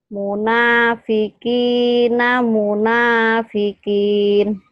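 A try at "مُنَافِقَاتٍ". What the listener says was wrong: Munafikot. Itu kan barisnya di atas. Munafikina, munafikot. Munafikina, munafikot.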